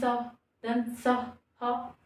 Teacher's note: जो ह का साउंड है व घर्षण के साथ बाहर आ रहा है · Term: उष्म व्यंजन